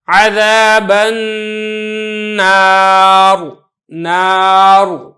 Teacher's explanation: را کو پر کریں گے کیونکہ را ساکن ہے، پہلے الف ساکن ہے اور اس سے پہلے زبر ہے